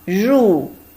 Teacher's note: This one is a combination of R and U fourth tone. Ru means enter.